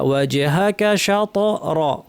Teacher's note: ওয়াজহাকা শা, তে কলকলা, ওয়াজহাকা শা র, ভারী, র ভারী, শা কিন্তু পাতলা